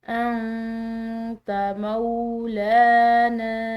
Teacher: یہاں پر نون ساکن ہے اور اس کے بعد تا ہے جو کہ حروف اخفا میں سے ہے، تو اس پر ہم نے اخفا کرنا ہے